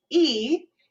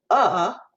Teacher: again it's forward central back is that when you're pronouncing them e is going to feel more forward and more spacious than uh which is more in the middle part of my mouth